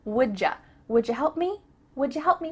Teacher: instead we are gonna say ja